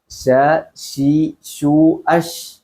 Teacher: ഷീന് നാവിന്റെ മധ്യഭാഗം, അത് നമ്മുടെ നേരെ മേലെ അണ്ണാക്കിനോട് ചേർന്നിട്ടാണ് ഉച്ചരിക്കേണ്ടത്. ചില ആളുകൾ ക്ഷ എന്ന്, നമ്മുടെ ക്ഷ മറ്റേ മലയാളത്തിലുള്ള ക്ഷ എന്നുള്ള ആ ഒരു റിക്ഷ എന്നുള്ള ക്ഷ അല്ല ഇതുള്ളത്. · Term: ഷീൻ